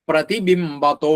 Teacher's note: ആ വിസർഗം ഓകാരായിട്ട് പ്രതിബിംബത്തോ എന്നാവും. അവിടെ പ്ര എന്നുള്ളത് ഉറപ്പിച്ച് ചൊല്ലണം.